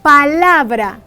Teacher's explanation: la sílaba tónica de esta palabra es la porque en ella se hace más fuerza al pronunciarse dicha palabra la las demás sílabas son sílabas átonas átonas sílabas átonas sílabas